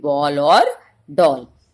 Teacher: अंग्रेजी भाषा के शब्दों के साथ बोली जाने वाली ध्वनि आ और ओ ध्वनियों के बीच की है, इसलिए आ के स्वरों में शामिल कर लिया गया है, जैसे बॉल और डॉल।